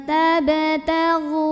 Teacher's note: Berikutnya ada qalqalah sugro karena ada huruf qalqalah yaitu ba yang sukunnya sukun asli dan ada di tengah bacaan, maka dibacanya dipantulkan dengan pantulan yang kecil